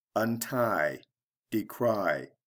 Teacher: notice that the last syllable is stressed